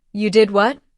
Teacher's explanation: with a rising tone at the end, it shows surprise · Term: intonation